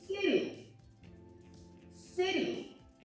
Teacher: The way to pronounce this is actually make this into a D sound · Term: flat T